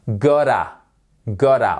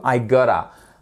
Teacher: le T en fait devient presque un de. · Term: American English